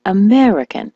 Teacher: the word American as you know is stressed on the me American